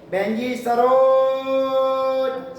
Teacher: जो आवाज को खींचा जाता है, वो खींचकर जो बुलाया जाता है, अपनी ओर आकर्षित किया जाता है, उसको पुलुत कहते हैं।